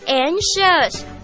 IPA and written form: ˈæŋk.ʃəs (anxious)